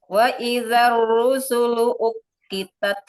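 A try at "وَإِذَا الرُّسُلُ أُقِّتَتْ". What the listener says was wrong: Qafnya tebalkan lagi. Ketika kita membunyikan huruf waw itu makharijul hurufnya adalah huruf asyafatan ya.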